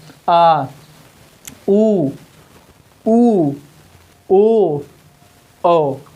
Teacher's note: अब आप बोलेंगे आ जीभ का पिछला भाग ऊपर उठेगा। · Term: पश्च स्वर